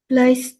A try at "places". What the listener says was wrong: Places. So don't forget the S sound when pronouncing the word places.